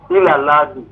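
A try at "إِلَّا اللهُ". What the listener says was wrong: Non, c'est hu. Hu. Illallahu.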